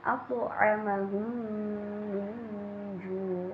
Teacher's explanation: cara membaca idgham mimi juga harus dengan dengung